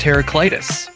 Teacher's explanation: The standard English pronunciation is Heru, K-L-Y-T-U-H-S, with the stress on the third syllable, K-L-Y